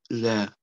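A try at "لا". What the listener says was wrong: Nicht La, der La ist länger, wie ein Elif.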